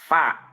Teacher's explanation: Ilsaqu syafatis sufla ila tarfi as-sanaya al-ulya. Menempelkan bibir bawah ke ujung gigi seri atas. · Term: makhraj fa